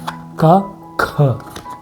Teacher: Aspirator as in you blow air, a puff of air when you pronounce these sounds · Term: aspirator pairs